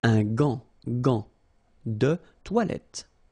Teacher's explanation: But in that case, you've got this an, so it's nasal, gant, and then final T is not pronounced here